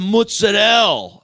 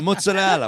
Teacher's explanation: when they don't pronounce the vowels at the end of like Italian food items